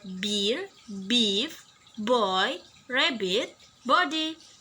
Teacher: B is described as voice bilabial stop.